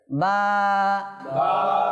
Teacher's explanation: দেখেন এই বাহিরে যেটা আছে এটা শুকনো অংশ, একটু ভিতরে গেলে ভিজা। তো বাটা কোথা থেকে উচ্চারণ হচ্ছে? উভয় টুটের ভিজা অংশ থেকে